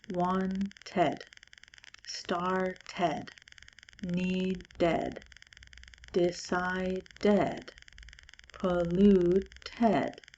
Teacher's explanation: And so I say the sound of the E, I say the sound of a vowel in order to add that extra D for the past tense at the end